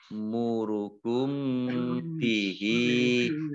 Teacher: Bi sama mim fathah alif mat tabi'i ya murukum, ini juga ada hamzah sukun ya murukum bihi, mim sukun bertemu dengan huruf ba, bacaan ikhfa syafawi dibaca samar-samar